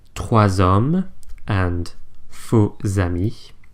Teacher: S and X, when they liaise, become Z.